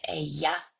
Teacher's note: the majority of speakers have lost the lateral distinction and have merged it. Um the have merged the two together and it's called a yes and 90% of speakers have adopted the yes.